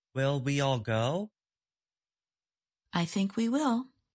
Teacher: The speaker says the words go and will with more force or stress. If a word is stressed, English does not permit reduced or weak forms.